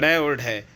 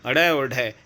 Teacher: ये दो ऐसे हैं जिनको भाई उप व्यंजन बोलते हैं मतलब जीभ जो है हमारी एकदम से ऊपर उठेगी और धड़ाम से नीचे गिरेगी